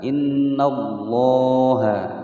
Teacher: Di sini ada lafaz Allah atau lafaz jalalah sebelumnya fathah, maka dia dibaca tafkhim atau tebal.